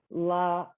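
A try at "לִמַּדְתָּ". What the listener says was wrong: E. There's a 1 dot under that. No, it's E. So li.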